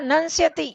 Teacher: म चेंज होके उसका उच्चारण न की तरह ही होगा, क्योंकि आगे स जो आ रहा है